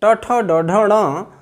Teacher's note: तो ट वर्ग मूर्धा से बोला जाता है